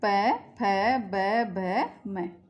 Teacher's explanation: ओष्ठ यानी होठ। तो जिन वर्णों का उच्चारण होठों की सहायता से किया जाता है ओष्ठ वर्ण कहलाते हैं। जिनका उच्चारण करेंगे तो होठों की आवश्यकता होती है, बिना होठों के इन वर्णों का उच्चारण नहीं कर सकते।